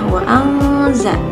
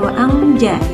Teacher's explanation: Hukum ikhfa ini dibaca dengan dengung samar ya, wa anza. Jadi bukan wa anja ya, wa anza, wa an, dengung seperti itu ya.